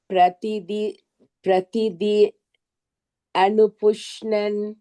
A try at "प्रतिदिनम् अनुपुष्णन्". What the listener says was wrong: प्रतिदिनम् मकारः you are leaving प्रतिदिनम् अनुपुष्णन् but when you chant pratidinam anupushnan should not be here pratidinam anupushnan